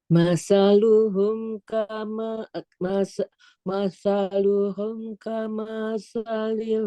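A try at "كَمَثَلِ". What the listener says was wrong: Kamanya pendek. Masaluhum kamasalil ladzi istauqada nara.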